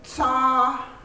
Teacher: ts a with the high tone is tsa it's long